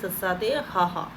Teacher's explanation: ਖਹਿਮੇ ਵਿਅੰਜਨ, ਹਵਾ ਆਵਾਜ਼ ਆ ਜਿਹੜੀ ਗਲੇ ਦੇ ਵਿੱਚ ਥੋੜੀ ਖਹਿ ਖਹਿ ਕੇ ਆਉਂਦੀ ਹੈ